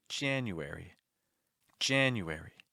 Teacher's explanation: do you hear how heavy that first syllable is Jan all the other syllables it's like taking a step down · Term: stressed syllable